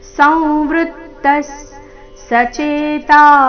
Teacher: ಸಂವೃತ್ತ ವೃ ಮೇಲೆ ನೈಸರ್ಗಿಕ ಆಘಾತ ವಿಸರ್ಗದ ಉಚ್ಚಾರಣೆ ಅರ್ಧ ಸ ರೀತಿ